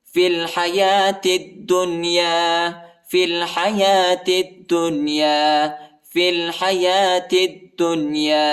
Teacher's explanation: فا کو لام کے ساتھ ملائیں گے، یا اور الف نہیں پڑھا جاتا